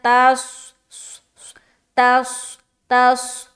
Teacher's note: तस तस तस नहीं बोलना, तस ऐसा नहीं बोलना, यानी कि बारीक नहीं निकालना वरना सीन बन जाएगा · ता को स्वाद से मिलाएंगे, स्वाद मोटा हर्फ है, मोटा करके अदा करिए।